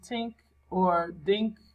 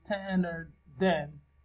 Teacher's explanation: think and then, voiced and voiceless, which are substituted by t and d in word initial position